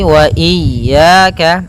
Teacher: Hati-hati jangan sampai memanjangkan ya-nya atau tidak mentasydidkan ya-nya. Wa iyya pada lafal ya ada mad tabi'i, yaitu berupa fathah bertemu alif, panjangnya 2 harakat.